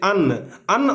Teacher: जैसे अन्न, अन्न आप लोग बोल रहे हैं तो देख रहे हैं कि हल्का नाक का भी यूज हो रहा है और मुंह का भी, यानी कि नाक और मुंह दोनों मिल करके बोलाता है अन्न। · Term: नासिक्य वर्ण